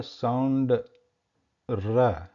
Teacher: Where the Ra, there is a contact between the tip of the tongue and that murdha area.